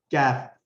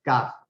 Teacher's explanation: کاف جو ہے زبان کو قاف کی جگہ سے تھوڑا سا منہ کی طرف آپ آتے ہوئے ادا کر سکتے ہیں. کیف تھوڑا سا آپ دیکھ رہے ہیں کہ زبان کا اصل حصہ اب ٹچ ہونے لگا ہے، زبان کا درمیان سے تھوڑا سا پچھلا حصہ ہے.